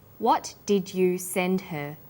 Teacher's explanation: send is the strong form and her is weak because her is not stressed